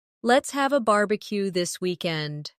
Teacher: Stress barbecue and weekend. So it sounds lively and friendly.